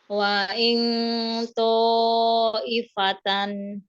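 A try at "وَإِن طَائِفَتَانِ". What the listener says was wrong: Nah, dinaikkan, jangan waing, bukan ing, tapi ini ya, tebal ya. Wail, wail, karena naik pangkal lidahnya. Wail ifatan. Sempurnakan lagi gunnahnya. Masih kurang panjang ya tadi ya. Ditebalkan lagi. Ini masih NG ya, bunyinya NG. Ditebalkan. Wa'il naik, pangkal lidahnya naik.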